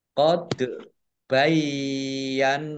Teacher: Qad bayyana dal sukun bacaan kolkolah dibaca memantul ditampakkan pantulannya